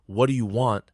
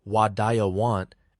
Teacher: linking words like what do you want sounding like wa want